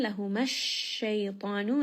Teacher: Shay is going to be med leen.